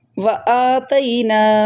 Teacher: جتنا آ کو لمبا کی اتنا نا کو کرنا ہے